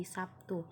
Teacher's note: Huruf B di sini merupakan huruf yang bersuara, sedangkan huruf T termasuk huruf yang tidak bersuara. Jadi biasa kita dengar penyebutan Sabtu berubah menjadi Sabtu. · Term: regresif